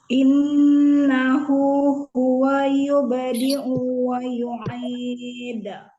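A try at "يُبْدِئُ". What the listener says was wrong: Agak kepanjangan u-nya yubdi'u wa. U-nya agak masuk ke ain. Yubdi'u. Bukan yubdi'u. Yubdi'u.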